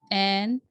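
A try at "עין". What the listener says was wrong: आइन। एन नहीं बोलना इसको आपने, आइन।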